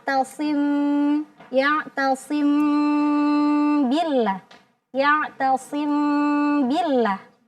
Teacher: Ya. Jadi mim apabila bertemu dengan huruf ba maka mimnya kita sembunyikan. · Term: al-ikhfa